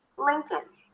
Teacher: All right, there is no L, and not because it's a dark L, you barely hear it, because there is no L whatsoever at the end.